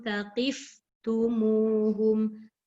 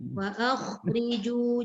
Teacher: kena jaga dekat fa mati, dekat kha mati, yang mana sifat dia semua terlepas